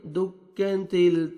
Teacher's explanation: کلا اذا دکت کاف کو باریک پڑھیں گے، دکت تا کو باریک پڑھیں گے تاکہ طا میں ساؤنڈ مکس نہ ہونا چاہیے